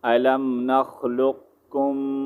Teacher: ہم نے لام اور باریک کاف کو جو ہے آپس میں جوائن کرنا ہے، ٹھیک ہے. اس کے بعد پھر کاف اور میم کو، یہ جو میم ساکن ہے اس کو ہم نہیں پڑھیں گے، ٹھیک ہے.